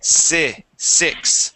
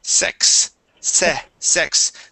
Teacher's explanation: the short I and the short e are similar